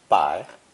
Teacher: pronounced not with the second tone, but with the third tone